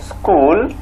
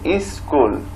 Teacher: অতিরিক্ত একটা ই শুরুতে যুক্ত হচ্ছে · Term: আদি স্বরাগম